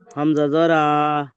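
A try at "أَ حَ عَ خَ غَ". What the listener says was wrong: দেবেন না। টান দেবেন না, স্পিডে পড়ে যান।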